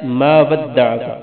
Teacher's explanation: عین کو گل کے درمیان سے نکالیں گے